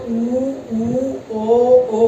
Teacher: पीछे से आवाज आती है, इनको बोलते हैं पश्च स्वर